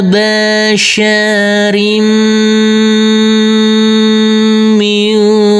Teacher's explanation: Huruf mim kita tekan, kita tahan, serta kita dengungkan. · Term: idgham bighunah